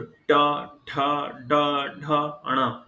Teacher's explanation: ट वर्ग के जितने भी अक्षर हैं उनका उच्चारण करते समय आपकी जिह्वा मूर्धा से टकराती है।